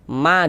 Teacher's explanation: Maksudnya memiliki harakat fathah atau baris fathah nih atau tanda baca fathah nih ya. Soalnya ma dibaca panjang madu thobi'i panjangnya dua harakat sesuai rumus tiga warna hitam. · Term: mad tabi'i